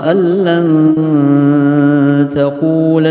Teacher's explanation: Ya, mentasydidkan huruf setelahnya. Jadi lamnya itu ditasydidkan setelah nun mati tapi tidak ditahan gitu ya. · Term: Idgham bila gunnah